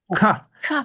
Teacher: Voyez, on aspire un peu le son. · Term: aspirer